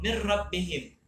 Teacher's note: nunnya hilang, sembunyi nun dari itu nama idgham, tapi tidak berdengung